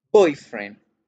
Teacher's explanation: Si yo digo boyfriend, hago el acento en boy y hago el acento en girl